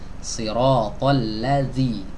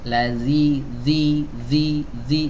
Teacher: Tidak diangkat lidah belakangnya alias relax, ya, sehingga suaranya benar-benar tipis. Ladzi, jangan ladzi, ya, ditebalkan. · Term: sifat istifal